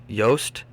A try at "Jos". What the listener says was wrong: There's no T. It's Jos. Jos Verstappen. Jos Verstappen. Jos Verstappen.